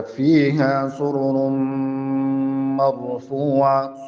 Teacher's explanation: دغه راګانې چې کومې دي دا ډکې ویل کیږي ځکه چې دلته دا پیخونه لري